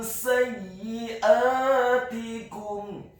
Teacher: Kata sayyiatikum, huruf sinnya dibaca fathah 1 harokat. Kemudian huruf ya-nya dibaca tipis, ditasydidkan, ditekankan, kasrah 1 harokat.